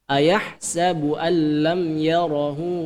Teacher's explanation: idgham bilagunnah itu dibaca dengan tanpa dengung